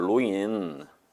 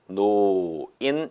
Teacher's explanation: 오모음은요, 다시 한번 이모음 계열이 아니지 않습니까? 그럴 때 리을은 니은으로 바뀝니다. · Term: 두음 법칙